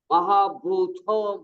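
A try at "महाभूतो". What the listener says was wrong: Only Bha is Mahaprana. Ta is, there is no Mahaprana there.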